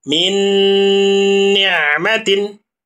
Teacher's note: Ada nun mati bertemu dengan huruf nun. Nun yang pertama dileburkan kepada nun yang kedua sehingga nun ini menjadi bertasdid dan harus dipanjangkan.